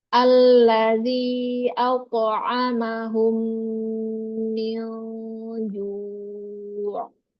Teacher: mim tasydid tingkatan gunnah yang pertama, gunnah akmal, maka sempurnakan dia gunnahnya. Panjangkan lagi gunnahnya.